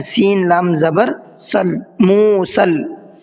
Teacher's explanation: سین کو ڈائریکٹ لام میں ملانا ہے